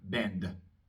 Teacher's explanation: La D es sonora, así que voy a pronunciar una pequeña A después, muy cortita